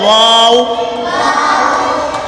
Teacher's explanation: واو دونوں ہونٹوں کی گولائی سے ادا ہوتا ہے۔ دونوں ہونٹ جب گول ہوتے ہیں تو واو ادا، واو۔